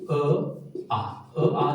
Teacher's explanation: जो इनका उच्चारण स्थान है वो है कंठ